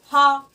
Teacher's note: हमारी जो हा की जो हमारी बोली है वो हमारे कंठ से आ रही है, ना कि हमारे मुख से निकल रही है। तो हमारा जो हा होगा वो हमारे का वर्ग में आ जाएगा। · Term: कंठ वर्ग